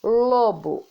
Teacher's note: A palavra lobo, o lo, é dita com mais força. Ela aparece mais. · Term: sílaba tônica